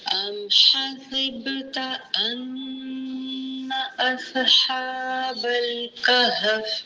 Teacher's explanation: ام حسبت ان اصحاب الکہف، حمزہ زبر میم ام، ٹھیک ہے، اخفا شفیع ہوگا، بس ام کرنا ہے، ام ہوٹوں کو بند نہیں کرنا۔ حسبتا، حاسب با پر جزم قلقلہ ہوگا۔